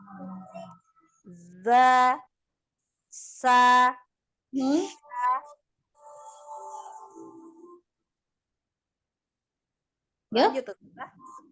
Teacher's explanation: zai sin dengan sod. 3 huruf yang memiliki sifatnya as-sofir. Ada desis.